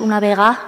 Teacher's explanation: en la parte central de Asturias también perdemos esta de intervocálica